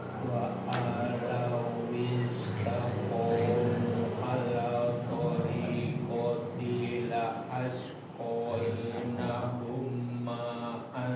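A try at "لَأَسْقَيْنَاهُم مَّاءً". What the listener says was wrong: Ditahan lagi, ada tasydidnya, mim. menahan bacaan nun dan mim yang bertasydid.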